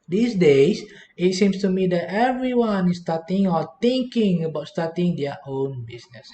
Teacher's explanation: at the end of the sentence the tone will go down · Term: intonation